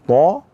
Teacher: Sedangkan huruf ta kita angkat suara ke atas, arah suara ke atas, isti'la, maka terangkat pangkal lidah ke atas sehingga suara pun naik ke atas, sehingga menghasilkan suara yang tebal. · Huruf ta itu keluar dari mana? Dari ujung lidah bertemu dengan belakang gigi seri atas. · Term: huruf ta tebal